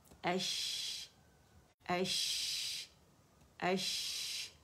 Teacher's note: اس میں شاورنگ ساؤنڈ ہے، شین کا شور سنائی دے گا آپ کو